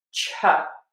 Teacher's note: All you need to know is that the T plus a Y becomes a chuh sound. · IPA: /tʃ/